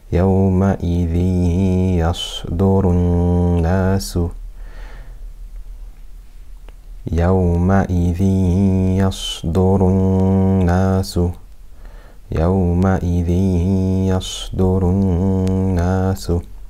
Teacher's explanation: So now we know we must do idgham with ghunna. We must merge the tanween completely into the ya with ghunna for 2 harakat.